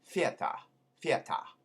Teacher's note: when you have a th at the beginning of a word it becomes an f kind of wide in the front of the mouth